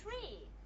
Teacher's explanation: You have a t sound, aspirated t.